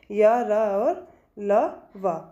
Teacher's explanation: मुख का बहुत संकुचित हो जाता है मुख वाला भाग, और फिर भी वायु किसी न किसी तरह से स्वरों की भांति बीच से निकल जाती है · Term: अंतःस्थ व्यंजन